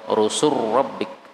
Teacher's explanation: lam ketemu RO boleh idgham